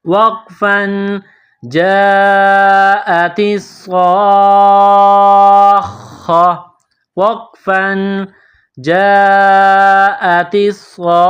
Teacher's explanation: جب وقف کریں گے سٹاپ کریں گے تو گول تا کو ہا سے تبدیل کریں گے